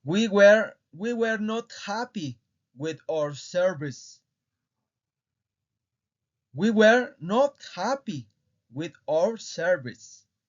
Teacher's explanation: Y si se dan cuenta, recalqué el were not